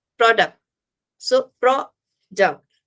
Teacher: So here the duck part is less stressed.